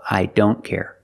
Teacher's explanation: with don't the t is between consonants so you don't hear it